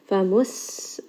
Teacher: seen here is going to have safir. Give it a little bit of whistle.